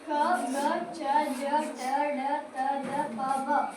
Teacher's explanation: ಕಡಿಮೆ ಉಸಿರು ಕೊಟ್ಟು ಉಚ್ಚರಿಸಲ್ಪಡುವ ಅಕ್ಷರವನ್ನು ಅಲ್ಪಪ್ರಾಣ ಎನ್ನುವರು.